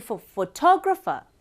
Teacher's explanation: and graph also un unstressed but when it comes to photographer fo is unstressed tog is stressed ra unstressed far also unstressed